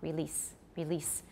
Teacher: it should be s and because it's voiceless the e should not be too long